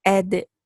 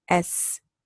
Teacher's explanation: Dal has kalkala, seen doesn't have a kalkala. They're completely different.